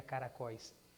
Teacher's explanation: ela termina num ditongo decrescente aberto · ditongo decrescente aberto aquele ou da palavra caracóis é uma vogal aquele i da palavra caracóis é uma semivogal